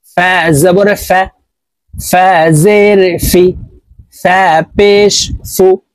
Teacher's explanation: জবর গাইন জের গি গাইন পেশ গি গু ফা জবর ফা ফা হরফ উপরের দাঁত নিচের ঠোঁটের পেটের সঙ্গে লাগিয়ে উচ্চারণ করব